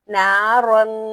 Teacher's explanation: تنوین کے اندر بھی نون ساکن چھپا ہوا ہوتا ہے، اس لیے یہاں پر بھی ہم نے گنگناہٹ کی آواز کرنی ہے، غنہ کرنا ہے۔